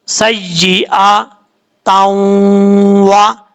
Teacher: दो जबर की तनवीन है, दो जबर की तनवीन के बाद आगे वाली जो लाइन स्टार्ट हो रही है वहां पे वाव है सबसे पहले, तो इस ता को वाव से कनेक्ट करेंगे, इदगाम यरमलून होगा। दो जबर की तनवीन के बाद वाव आ रहा है, इसलिए यहाँ पे गुन्ना भी इदगाम होगा और गुन्ना भी किया जाएगा